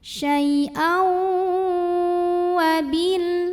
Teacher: Maka tanwin fathah ini lebur atau masuk ke waw disertai bunyi dengung, tahan. Syai'au wabil. · Berikutnya di sini ada hukum idgham bi gunnah karena ada tanwin fathah yang bertemu huruf waw. Maka tanwin fathah ini lebur atau masuk ke waw disertai bunyi dengung, tahan.